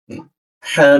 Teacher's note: posisi ha di ee jakun